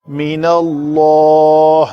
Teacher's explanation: نون کو پتلا رکھ کے لام اس میں جلالہ کو پر کریں گے